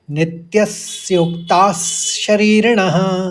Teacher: दूसरे चरण को देखिए, नित्यस्य स्योक्ताश ऐसे पढ़ेंगे और शरीरणः, शरीर ये दीर्घ पढ़ा जाएगा और ऋणः ये ह्रस्व पढ़ा जाएगा